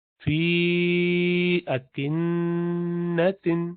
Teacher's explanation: فی مدیہ ہے یا، لیکن اس کے بعد حمزہ بھی آ رہا ہے تو مزید لمبا کریں گے، ایک الف نہیں، اب اس کو 4 سے 6 الف کھینچیں گے. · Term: مد الجائز منفصل